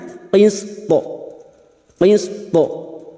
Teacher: yang memiliki sifat Qalqalah dengan pantulan yang kuat karena mati di akhir kalimat dan dibaca waqaf